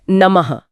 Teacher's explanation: विसर्ग असल में है क्या? यह हमारे फेफड़ों से निकलने वाली हवा का एक छोटा सा धक्का है। जैसे एक हल्का सा ह का उच्चारण।